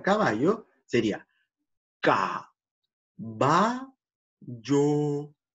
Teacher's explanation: La idea es que vamos a destacar el movimiento que realiza la lengua para tocar el velo del paladar. La lengua sube para el dorso o la parte posterior de la lengua sube para tocar con el paladar.